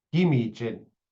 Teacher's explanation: In some dialects, the double G is pronounced K. In Bictagong, the preferred pronunciation is as a single voiced consonant G, as if there was only one G there. In places like Doganing or Wikwemkong, you'll find that that becomes a K.